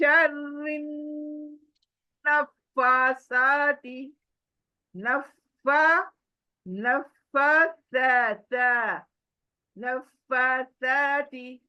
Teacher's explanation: आपकी जुबान चौड़ी होगी ऊपर के दांत जुबान को कट करेगी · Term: थ्री डॉट का त